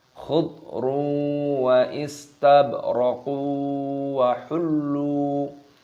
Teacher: Dhammah tanwin bertemu dengan wawu, idgham bi ghunnah, dimasukkan dan disertai berdengung.